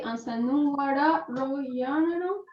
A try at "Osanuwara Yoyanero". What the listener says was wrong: Yoyanero. Take that R out and put an I. Yoyanero, yeah.